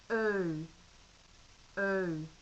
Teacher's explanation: very much to the front of the mouth a bit like er but perhaps even further forward